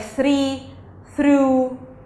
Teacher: about the to know about this letter first how it's pronounced it's fricative so it's between the teeth and you push the air